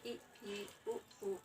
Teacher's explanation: हमारा मुख आधा लगभग आधा बंद रहता है ना कि पूरा बंद होता है। जैसे ई, उ, ऊ आधा बंद होता है आधा खुला।